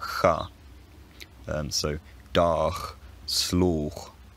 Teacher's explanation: it was probably pronounced as a fricative slightly further forward in the mouth, nearer to the soft palate